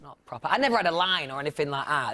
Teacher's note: Another common characteristic of the Yorkshire accent is the tendency to drop the t at the end of words like that.